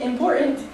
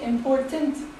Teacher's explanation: sometimes Americans drop the T completely